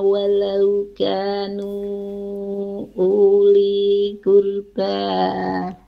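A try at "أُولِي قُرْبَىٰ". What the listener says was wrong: Jadi situ u-nya itu tidak panjang ya, karena itu wawunya bukan sukun.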